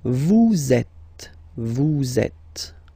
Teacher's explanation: vous is ending with S, and then you tend to make a little link between them. So vous êtes, z, it goes like that. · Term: liaison